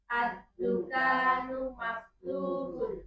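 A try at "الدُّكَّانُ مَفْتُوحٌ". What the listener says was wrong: Kafnya agak dipanjangkan dikit.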